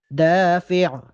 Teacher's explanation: دال الف مدہ ہے، دال کو 1 الف کے برابر لمبا کر کے پڑھیں گے۔